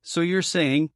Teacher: Something like, so you're saying, with a light, rising tone.